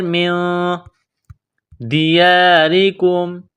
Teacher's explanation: نون ساکن کے بعد دال ہے، حروف اخفا ہے، تو نون ساکن پر غنہ کریں گے۔ میم نون زیر من، دیارکم، را کو باریک کرنا ہے، را کے نیچے زیر ہے۔